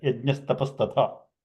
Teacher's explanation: the visarga will become sakara, and the parapada will just join. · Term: visarga becoming sakara